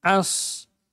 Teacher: A-nya tipis shad yang tebal.